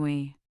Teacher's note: its sound is a quick rounding of the lips as in we. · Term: semi vowel